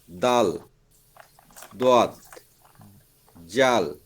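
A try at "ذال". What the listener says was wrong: জাল না, জাল না, কি হবে? জাল, জাল নরম করে, জাল জাল জাল জাল জাল জাল লাগা জাল জাল জাল।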